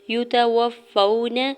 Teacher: یا کے اوپر سنگل پیش جلدی سے ادا کرنا ہے، تا کے زبر کو بھی بغیر کھینچے ہوئے ادا کریں گے